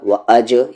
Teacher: جیم ساکن ہے قلقلہ ہوگا، وَأَجْ یعنی باؤنسنگ ساؤنڈ سے پڑھیں گے